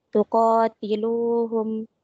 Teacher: ko hukumnya mad tabi'i dibaca panjang 2 harokat